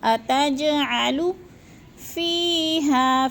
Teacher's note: جیم ساکن ہے، حروف قلقلہ میں سے ہے تو اس کو ہلا کے پڑھنا ہے